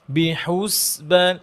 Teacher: হুস বলার সময় যেন ঠোঁট গোল না থাকে। যখন আপনি সিনকে ধরবেন তখন আর ঠোঁট গোল রাখা যাবে না।